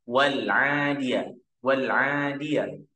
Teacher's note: Kalau alif lam qamariyah ini tetap lamnya mati.